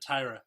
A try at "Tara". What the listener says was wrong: Tara. you never say Tara. No, you said Tiara. It's Tara.